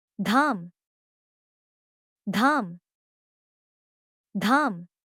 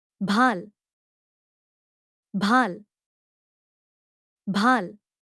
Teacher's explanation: The vocal cords continue to vibrate, but the release also has a breathy quality. It is not simply an ordinary consonant, followed by a separate English H.